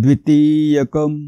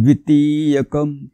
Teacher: ती चा उच्चार तुम्ही लांबवलात ना की द्वी आपोआप रस्व होईल